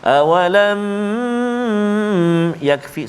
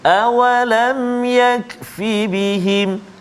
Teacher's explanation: cara bacaannya ialah dijelaskan mim mati tanpa dipanjangkan dengung. Maknanya jelaskan bacaan kita tanpa kita panjangkan bacaan kita ataupun tanpa dengung. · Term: izhar syafawi